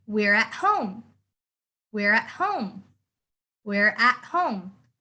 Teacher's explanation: when you have the word at, you don't pronounce the T. You make the T silent. So it's the exact opposite to to.